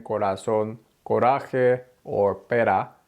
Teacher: when the r Falls between two vowels as in Corazon or Pera that R is just a quick little tap it's not rolled